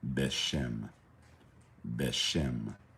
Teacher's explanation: Notice the vowel, the vocalization, not ba, because we don't need to assimilate the definite article. Beshem, Beshem, not Bashem or Bahashem, Beshem.